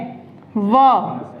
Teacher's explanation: व का उच्चारण होता है दंतोष्ठ से, दंत और ओष्ठ से